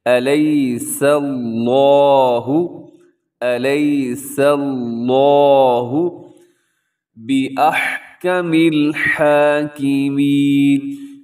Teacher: کوشش کریں کہ اس میں اس کو موٹا نہ کریں بلکہ اس کو آپ باریک پڑھیں، سین کو باریک پڑھیں، لفظ اللہ کو موٹا کریں